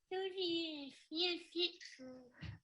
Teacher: as you can hear sort of the tone of the speech sounds nasal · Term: hypernasal speech